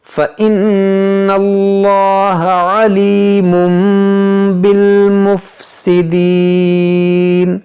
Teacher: تو یہاں پر ہم کریں گے اقلاب، یعنی اس کو پڑھیں گے مم پڑھیں گے، اس کو علیمن نہیں پڑھیں گے